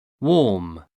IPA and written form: wɔːm (warm)